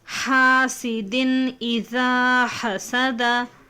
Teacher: تنوین کے بعد حمزہ ہے نا، تو ہمیں ظاہر کر کے بلا غننے کے پڑھنا چاہیے. اس کو اظہار کہتے ہیں.